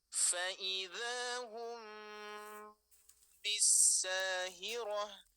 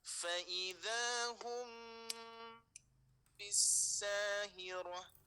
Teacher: dengungan nya jaraknya sama dengan tiga ketukan irama